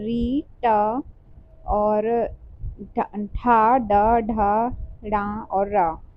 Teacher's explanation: तो इसका उच्चारण जो है मूर्धा से होता है। यानी कि तालु के आगे वाला भाग मूर्धा होता है। वहां से इसका उच्चारण स्थान होता है।